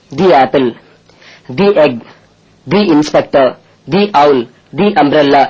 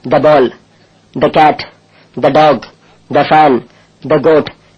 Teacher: vowel சவுண்ட்ல ஆரம்பிக்கிற வார்த்தைகளுக்கு முன்னால டிஎச் வந்தா தின்னு உச்சரிக்கணும்